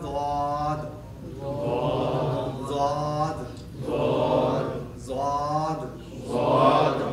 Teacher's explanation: زبان کا کنارہ، بغلی کنارہ یا زبان کی کروٹ. اب ان دونوں میں سے لیفٹ یا رائٹ کو اٹھا کے آپ نے پچھلی داڑھوں کی جڑ سے ٹچ کرنا ہے